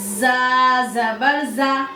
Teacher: जा को सीटी, सख्ती और मुस्तफीला यानी बारीक करके पढ़ेंगे।